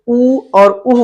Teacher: उ और उह का उच्चारण जो होता है ओष्ठ से होता है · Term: ओष्ठ वर्ण